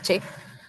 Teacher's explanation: Se cierra el paso del aire. Es un poquito oclusivo, pero también es fricativo porque el aire sale con fuerza. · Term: africado